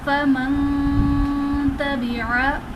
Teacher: فا زبر فا میم نون زبر من فمن تا زبر تا فمن تا با زیر بی فمن تبی عین زبر ع فمن تبع. اب نون ساکن کے بعد حروف اخفا میں سے تا آ رہا ہے، تو یہاں پر ہم اخفا کریں گے، یعنی نون ساکن میں ہم غنہ کر کے پڑھیں گے